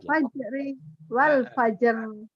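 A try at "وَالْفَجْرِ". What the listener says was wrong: Jangan wal fajri. Makanya Iqra 1 sampai Iqra 4 itu dibaca apa adanya.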